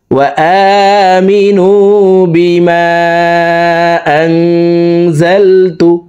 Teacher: নুন সাকিনের পর ইকফার হরফ জা সেই কারণে এই নুন সাকিনকে নাকের ভিতরে লুকাইয়া গুন্নার সহিত পড়ব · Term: ইকফা গুন্না